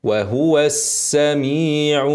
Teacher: س مشدده فيها صفير طويله